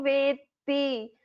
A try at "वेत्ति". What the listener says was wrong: All of you please note here Veti. So it is not Veti, it is Veti. Two t's should be chanted clearly.